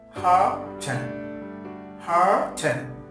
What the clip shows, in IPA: ˈhɑːt(ə)n